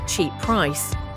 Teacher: one p disappears when we pronounce it